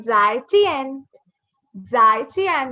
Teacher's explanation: Fourth tone, both falling short and sudden.